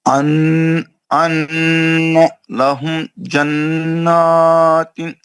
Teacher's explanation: نون کا گنہ کرنا ہے اور کھینچنا بھی ہے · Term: نون مشدد